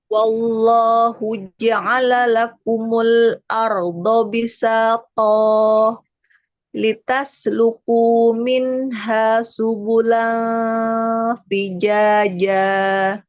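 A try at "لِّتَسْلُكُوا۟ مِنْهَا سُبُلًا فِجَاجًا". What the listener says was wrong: Subulan, tipiskan. Jangan jangan ke belakang, ya. Ifanya tipiskan. Nah, tadi memang di awal-awal bagus, nggak naik-naik fathahnya, tapi ketika mulai di ayat ke-11 tuh naik-naik ya. Pokoknya diratakan lagi fathahnya ya. Banyak yang huruf lam sih, di huruf lam fathah.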